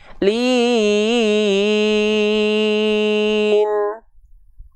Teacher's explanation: harus ada dengungannya sedikit karena hakikat Nun itu dia punya gunah dia suaranya masuk ke dalam rongga hidung atau alkhaisyum atau Pangkal hidung